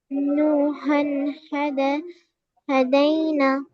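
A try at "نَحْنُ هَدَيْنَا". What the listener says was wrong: ہدینا. پورا پورا کھینچے نا. یہ کیا ہے؟ الف مدہ. الف مدہ کو کیوں نہیں کھینچتے آپ لوگ برابر؟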